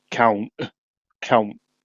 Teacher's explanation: It's like there's no t on it because it's like a yeah, guttural thing.